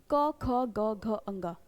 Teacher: आवाज सीधा आपके कंठ से आ रही है